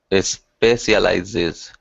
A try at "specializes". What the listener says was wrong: Yeah, I need to hear the Z.